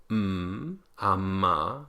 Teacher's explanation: We have the voiced bilabial nasal